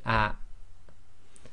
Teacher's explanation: Hamza with sakin it cuts short the sound before it